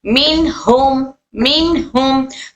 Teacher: यहां पर मीम की आवाज को हमें लंबा नहीं करना है क्योंकि मीम में सिफत रखावा है